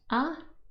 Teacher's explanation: we have a at the bottom and that is also called an open back unrounded vowel sound